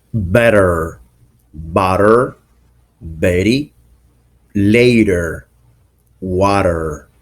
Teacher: the t between two vowels sounds like d phonetically but is most likely the sound of the r for example